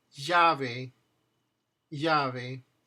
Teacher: So these are pronounced identical. Um in some cases the double L has a little bit more of a J sound